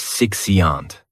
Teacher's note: And this noun has 3 syllables. And the stress is on that first syllable.